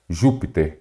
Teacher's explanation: a antepenúltima sílaba é acentuada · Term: proparoxítona